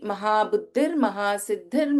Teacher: in Mahabuddhi, we have Alpa Prana Da as well as Mahaprana Dha. Again in Mahasiddhi, we have Alpa Prana Da and Mahaprana Dha.